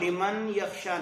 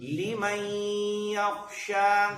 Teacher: اس کو لمن یخشا نہیں کہنا, نون یا میں مدغم ہو جائے گا